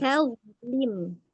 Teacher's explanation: Ta-nya tipis dulu baru ke dha.